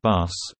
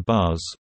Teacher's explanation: Voicing is what separates English [s] in bus (unvoiced sibilant) from [z] in buzz (voiced sibilant).